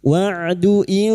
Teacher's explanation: Huruf ain berasal dari tenggorokan (wasthal halqi). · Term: ain sukun